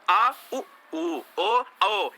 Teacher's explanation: ये सब देखो गले से आवाज आ रही, जो गले से आवाज आएगी वो पश्च स्वर कहलाएगा। क्यों, क्योंकि जीव के पीछे का हिस्सा सक्रिय रहता है ना।